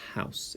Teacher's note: So house, it's the h, and I try and elongate that first sound.